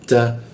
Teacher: Nah, ini kalau dibaca jadinya ta, kalau dimatikan jadinya ha dia. Ta, ada hembusan udaranya ya, bocor tipis dia.